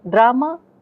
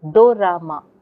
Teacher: When Japanese people hear drama, they report hearing the do ra ma. They insert do. The da and ra cannot come together in Japanese. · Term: illusory phonemes